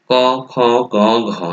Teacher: এগুলো উচ্চারণের ক্ষেত্রে জিহ্বার মূল বা গোড়ার দিক থেকে উচ্চারিত হয়, এই জন্য এগুলোকে বলা হয় জিহ্বামূলী ধ্বনি।